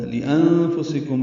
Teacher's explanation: لِأَنفُسِكُم میں نون ساکن کے بعد فا آنے کی وجہ سے اخفا ہے، کم میں میم ساکن کے بعد میم آنے کی وجہ سے ادغام ہے، یہ غنہ ہوگا۔